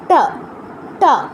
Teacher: আর মূর্ধন্য স যেটা, এটা নাম শুনে বুঝতে পারছি উচ্চারণ স্থান মূর্ধায়, এর উচ্চারণ হবে হচ্ছে ট এর মতো, ট, ট, টটাও কীভাবে উচ্চারণ করছিলাম আমরা, জিহ্বাটা ভাঁজ করে মূর্ধায় স্পর্শ করে তারপর স্লাইড করে সামনের দিকে আসছিল